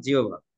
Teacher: অর্থাৎ আহ এটা আসলে ওই যে ব আছে, আর ওই হতে হ উঠে যে, হটা যাচ্ছে বয়ের সাথে মিশে বয়ের সাথে হ যুক্ত হয়ে ভ হচ্ছে